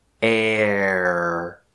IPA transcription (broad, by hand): ɛr